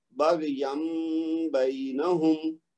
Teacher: نون ساکن یا تنوین کے بعد با متحرک آئے تو آپ نے نون کی آواز کو میم میں بدل دینا